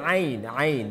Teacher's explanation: The makhraj for عين is from the middle of the throat.